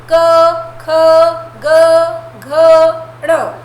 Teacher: क वर्ग कंठीय होता है। कंठ मतलब कंठ से जो निकलता है